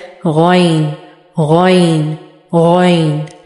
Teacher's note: गौइन और खौ, इन दोनों का मखरज है top part of our throat. ठीक है, टॉप ऑफ द थ्रोट से अदा होते हैं, यानी कि हल्क का सबसे ऊपर वाला जो हिस्सा है वहाँ से निकलते हैं ये दोनों।